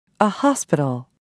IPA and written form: ˈhaspɪtl (hospital)